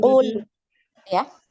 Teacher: ketika sukun huruf lam ini ngalir ya. Ngalir bukan memantul.